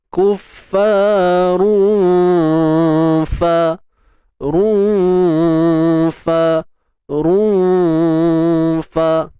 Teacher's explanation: Ikhfa haqiqi dibaca dengan tarqiq, nipis, dan berada pada martabat pertengahan.